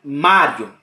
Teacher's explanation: é o ponto Esse é ponto memorizou isso já foi então é crescente porque começa fraco com i porque é semivogal e termina forte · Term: ditongo crescente